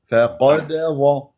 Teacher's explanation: بعدين دال مقلقه لما تمسك لي اياها تضرب المخرج وتهرب بسرعه فقد ظ فشوف وشنو الحلول